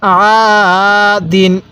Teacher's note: হ্যাঁ, আইন আলিফ জবর আ, দাল দুই জের দিন, আ দিন। আইনটা গলার মধ্যে চাপ দিব · এক আলিফ টান দিব, জবরের পরে খালি আলিফ, এক আলিফ টানতে হয়